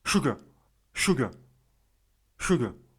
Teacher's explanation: Surtout lorsque le R se trouve devant une voyelle longue ou lorsque le R se trouve en fin de mot. Le R, en fait, vous faites un mix, vous allez faire un mix entre le R et le W.